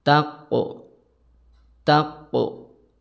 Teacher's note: untuk huruf qaf itu tidak boleh keluar angin